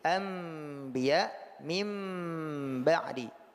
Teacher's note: Maka oleh karena itu ketika mengucapkan iqlab ini ataupun al-qalbu ini, yang betul-betul bekerja itu adalah bibir. Bibirlah yang menahan suara, bibirlah yang tertutup habis. Ya, sehingga kita baca menjadi anbiya mim ba'di. Dua bibirlah yang menahan suara, bukan ujung lidah.